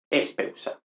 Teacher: Espeutza, pero no, simplemente desaparece la delta y nos queda espeusa